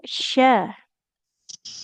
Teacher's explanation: tengah lidah dia menempel ke langit-langit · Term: huruf syinya